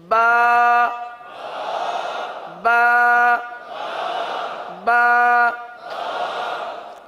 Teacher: یہ جو ہم حرف ادا کر رہے ہیں ایک الف تک کھینچ کے پڑھ رہے ہیں